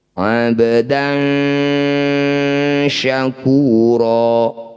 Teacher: Cara bacanya bunyi fathah tanwin, dengungkan 2 harokat, ketika dengung lisan sudah ada di shin. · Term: ikhfa awsat